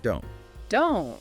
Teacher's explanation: In the phrase don't make sense, the T at the end of don't is typically not fully pronounced as a crisp T sound with that little puff of air you might expect. You might just hear the tongue go to the T position and stop the air, but not release it before moving to the M of make. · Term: unreleased consonants